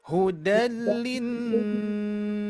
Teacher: Linnya masih kurang dengung ya